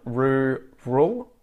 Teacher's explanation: I pronounce both R's in rural, and the A at the end there becomes like a schwa sound, rural. Very, I pronounce the R there, very, very.